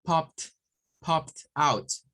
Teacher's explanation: Entonces se duplica la P y se agrega el ID. Pero como termina en P, el sonido es t, con una T.